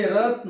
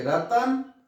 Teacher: त को मैंने जल्दी बोला, क्यों, र में जो अ है उसको थोड़ा सा हमने खींच दिया